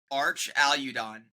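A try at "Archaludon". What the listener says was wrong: Where's like the Y coming from? It's Archaeodon. You're saying Udon. I'm saying you're putting a Y in. No, the U's not by itself. The U is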